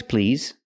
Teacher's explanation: use the vibration sound Z with the word please